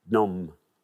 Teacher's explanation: You don't need to say the P. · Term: Silent P